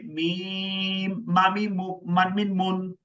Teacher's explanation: দুই ঠোঁটের শুকনো জায়গা হইতে মিম